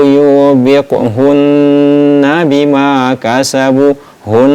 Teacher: ini ditahan dua sampai harakat dan dibaca dengung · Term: Ghunah musyaddadah